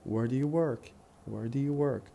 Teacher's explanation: the stress pattern will be strong weak weak strong